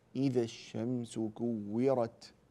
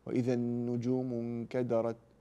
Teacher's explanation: اذا وقفت على التاء فتحتاج الى ان تبينها وان تخرج همسها همس يعني كده صوت بسيط يعني هواء يخرج بعد التاء